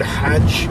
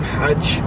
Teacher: it's a laryngeal, voiceless fricative, which means that it's kind of in the larynx area